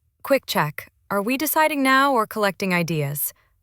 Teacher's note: With a gentle rise at the end. That rising sound signals a question, not a challenge.